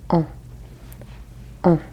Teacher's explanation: This is a very round, nasal sort of sound. On. And I'm kind of using the back of my tongue to almost stopper up the cavity of my throat back there to create that sort of nasal sound.